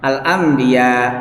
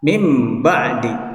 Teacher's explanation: Jadi nunnya itu, nun matinya itu langsung ditukar ke mim, disertai adanya gunnah mukhafah, gunnah yang ya ringan. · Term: iqlab